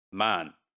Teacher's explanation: the a vowel is nasalized here